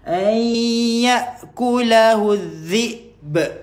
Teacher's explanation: Nun kosong dengan jumpa dengan ya, masukkan dekat ya idgham ma'al ghunnah